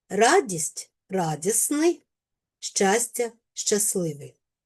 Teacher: Спрощується середній приголосний т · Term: спрощення